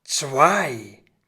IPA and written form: tsvaɪ̯ (zwei)